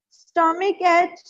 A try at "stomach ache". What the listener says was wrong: It's not H. It's ache. Ache is how we pronounce it. Stomach ache. Ache जैसे हिंदी में pronounce करते हैं, right? वैसे, yes.